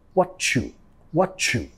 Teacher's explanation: I see what you, vamos a vincular metiendo sonido ch